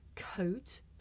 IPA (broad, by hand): kəʊt